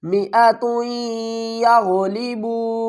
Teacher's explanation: تا کو یا سے ملائیں گے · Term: ادغام